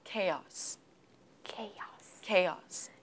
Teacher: I think uh the stress is on the first syllable